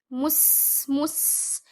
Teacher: Run the sin, giving it the whistling sound. Don't bounce it.